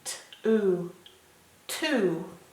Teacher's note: You can't hear the W, and the O makes a oo sound.